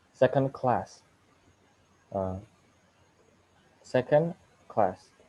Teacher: symbol that before the word class uh indicates the stress syllable the primary stress on the second word secondary stress is on the first word · The primary stress is on the second word. Secondary stress is on the first word. Okay, we can see the secondary stress on the first word by seeing the small dot or small symbol of the lower spot, and then any word class, any word class.